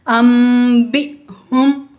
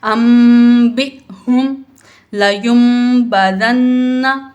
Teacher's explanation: حمزہ ساکنہ ہے اس کو ہم جھٹکا دے کے پڑھیں گے